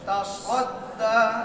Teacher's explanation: সদের মধ্যে ইতবাতের সিফত আছে, জিহ্বার মাঝখান উপরে চাপ দিতে হবে, ইস্তিআলার সিফত আছে, জিহ্বার গোড়া উপরে চাপ দিতে হবে। আর সফির নামে একটা সিফত আছে, এই ঝাঁঝালু তেজ একটা আওয়াজ বের হবে, এইগুলা সদের মধ্যে আছে, সিনের মধ্যে নাই।